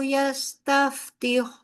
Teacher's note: बा साकिन है, लिहाजा यहाँ पर कलकला होगा। क़ब्लु यस्तफ्तिहून, वाव मद्दा है अच्छे से, हा में सांस भी बाहर की तरफ जाएगी और आगे वाव मद्दा भी आप करेंगे।